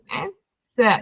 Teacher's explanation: Jadi sa kena keluarkan sikit lidah. Lidah hujung tu keluarkan sikit.